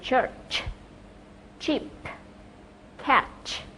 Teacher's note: đây là một phụ âm không kêu, voiceless consonant. Và âm này được tạo ra giữa phần mặt lưỡi trước và vỏ miệng. Đây là một âm tắc sát.